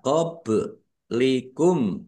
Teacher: Ba sukun bacaan qalqalah dibaca memantul ditampakkan pantulannya. Qob likum tumma. · Mim sukun bertemu dengan huruf sa. Bacaan idhar syafawi dibaca jelas.